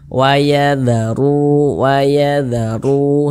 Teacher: huruf ro yang memiliki tanda baca domah maka dia dibaca takhim dibaca tebal sehingga pangkal lisan kita itu naik terangkat ke atas huruf r-nya itu kita tebalkan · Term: tabkhim